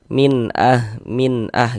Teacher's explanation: Kemudian cara membacanya itu dibaca jelas. Jadi bunyi nun sukun atau bunyi tanwinnya itu dibaca jelas. Kemudian tidak didengungkan, tidak digunahkan. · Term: izhar halqi